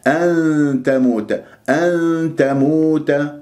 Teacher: نون تاء إخفاء، ولا أذهب إلى حيز مخرج التاء، ما أقول أن تموت، هذه إظهار لما أنت رحت باللسان إلى مخرج النون اللساني.